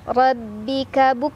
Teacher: kafnya tertahan dulu suaranya, punya sifat syiddah, baru anginnya belakangan, ya, hames. Buk ra. Ra dibaca secara tafkhim karena berbaris di atas atau fathah, jadi dibaca tebal.